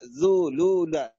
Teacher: فسلكي سبل ربك ذللا، سبل ربك ذللا، سبل بالشفتين في السين والباء، سبل ربك ذللا. لا ذلولا، نضم الشفتين في الذال واللام